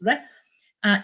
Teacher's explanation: the alveolar trill, or sometimes tap